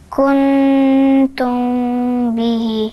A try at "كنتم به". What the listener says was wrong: برضو بنقفل بقنا، أنا مش عايزاكي تقفلي بقي، لازم نتدرب عليها.